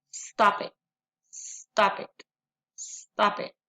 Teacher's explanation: From consonant to a vowel, the plosive exploded, blending with the vowel.